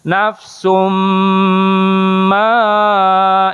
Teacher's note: Ada tanwin menghadapi mim gitu ya, disebutnya idgham, idghamnya bigunah. Nafsum ma itu nah ada topinya gini lebih panjang dari mad.